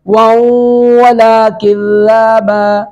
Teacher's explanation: ला यस्मऊन फ़ीहा लग़वन लग़वन वला किज़्ज़ाबा, वाव वाव पर तनवीन, तनवीन नून तनवीन के बाद वाव इदगाम बागुना करते हुए